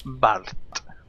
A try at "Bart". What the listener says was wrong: Bart. You say Bart. I mean, like Bard?